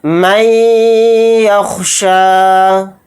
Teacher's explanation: من یخشیٰ، یہاں پر ادغام کا قاعدہ ہو رہا ہے کیونکہ نون ساکن کے بعد یا آ رہا ہے، تو یہاں پر ہم یا پر تھوڑی دیر آواز کو روک کر ادغام اس طرح سے کریں گے